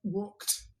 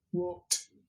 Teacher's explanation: notice that there is no second vowel there